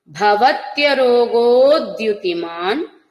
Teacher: రోగో దీర్ఘ ఉచ్చారణ చేస్తూనే దకారం తీసుకోండి